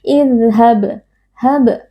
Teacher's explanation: qalqalah sughra karena ada huruf qalqalah yaitu huruf ba yang sukun di tengah-tengah kata atau di tengah kalimat, dibaca dengan suara yang memantul.